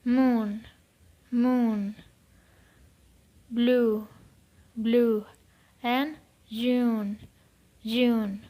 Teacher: this is a long sound and its horizontal position is back and its vertical position is high